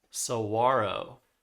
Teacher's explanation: we're not pronouncing the g or the h